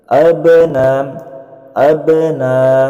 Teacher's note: Ini adalah qalqalah ya. Qalqalahnya masuk ke dalam qalqalah sugro atau qalqalah yang pantulannya kecil.